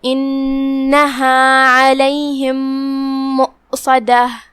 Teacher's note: کلمت مؤصدہ میں یہاں واو پہ حمزہ ہے، ہمیں حمزہ کو ظاہر کرنا ہے. حمزہ کی ادائیگی حلق کے نیچے والے حصے سے ہے · صاد حروف التفخیم میں سے ہے، ہم اسے بھاری آواز میں منہ پھلا کے پڑھیں گے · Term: حرف الصاد